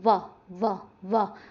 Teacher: दांत आगे लग रहे हैं होठों पे आके तो ध्यान रखिएगा दंतोष्ठ है